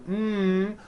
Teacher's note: closing off your nose you see you cannot do it because the M sound comes out of your nose it's a nasal sound